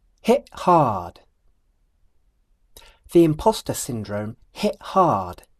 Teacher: I don't move my tongue at the end of the word hit